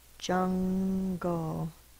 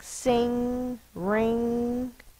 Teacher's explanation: this n is made in the back of the mouth because the G is also made in the back of the mouth